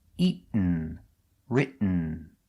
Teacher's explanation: You go to a stop T, writ, but you don't make the T, you stop, writ, and then you fall to an N.